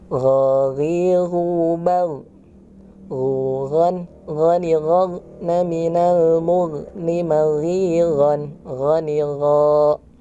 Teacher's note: yang perlu diperhatikan dari huruf ghin ini adalah tidak mantul ya. Untuk mengeceknya, silakan teman-teman disukunkan.